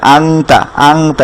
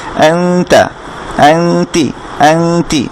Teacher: এভাবে মোটা না, এটা হবে চিকন, যেহেতু তা হারফটা চিকন সেজন্য এটার গুণনাটাও চিকন হবে